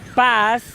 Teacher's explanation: Lo podemos sentir al momento de decir paz, termina con los dientes superiores e inferiores delante de la punta de la lengua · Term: Fonemas interdentales